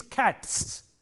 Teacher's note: For example, if you have a word like cat, C-A-T, cat, this sound, t, is a voiceless sound, and therefore when you make it a plural, it takes a voiceless sound again, s.